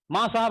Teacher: माँ साहब में बीच के जो ध्वनियां होती हैं, बीच के जो वर्ण होते हैं, उनको हम उनका लोपन कर देते हैं, उनको विलुप्त कर देते हैं और सीधे सीधे सपाट ही हम बोलने का प्रयास करते हैं। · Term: ध्वनि लोपन